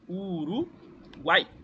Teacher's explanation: é o encontro de três vogais na mesma sílaba, sempre nesta ordem. Semivogal mais vogal mais semivogal.